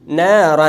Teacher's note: نارا، در کلمه نه الف ساکن ما قبل زبر دو حرکت مد اصلی و الف هم باریک خوانده میشه چون ما قبل الف نون آمده که نون از جمله حروفای باریک است، پس الف هم از باریک خوانده میشه.